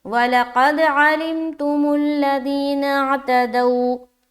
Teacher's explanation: جب بھی واو ساکن سے پہلے زبر آ جائے تو واو لین کا قاعدہ بنتا ہے اور اس کو ہم نرمی کے ساتھ جلد ادا کرتے ہیں